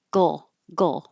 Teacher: The front is making the L, while the back is going gull, gull. So it's good practice to make the G and the L at the same time.